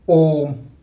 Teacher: ठीक है, तो जैसे हम लोग बोलते हैं ओम, तो ऐसे होता है। ठीक है, ओम, इसको बोलने में 3 गुना समय लगेगा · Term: प्लुत स्वर